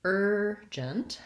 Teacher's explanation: So urgent has first syllable stress.